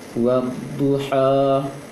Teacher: jangan buka kali, tapi buka sedikit, mengarah ke A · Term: fathah